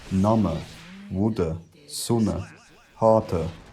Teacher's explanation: most unstressed vowels at the ends of words had collapsed into something like uh